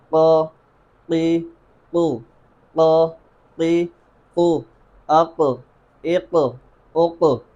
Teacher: اب گاف کہتے ہوئے آپ کی زبان کی جڑ جس جگہ پر لگ رہی ہے گاف، اس سے معمولی سا پیچھے کی طرف، زیادہ نہیں بالکل تھوڑا سا پیچھے کی طرف سے آپ نے قاف ادا کرنا ہے